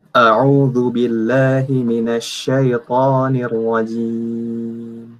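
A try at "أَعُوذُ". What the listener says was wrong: Untuk ainnya antum belum dapat dengan sempurna. Masih au. Jelaskan ain. A'udzu billahi. Tadi antum masih masih ngayuh.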